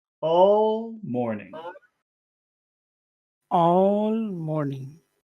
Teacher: That starts high and finishes low.